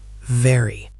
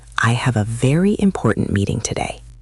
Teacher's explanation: Some people say it like a W sound, which can be confusing. The right way is to place your top teeth on your bottom lip and vibrate your vocal cords. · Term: v sound